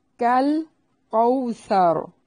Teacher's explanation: کاف کو باریک پڑھنا ہے، لام کو ہلانا نہیں ہے